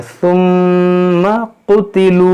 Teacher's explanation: यहाँ मीम मुशद्दद है, इसमें गुन्ना करेंगे, ये सा है, इसको नरमी से पढ़ेंगे।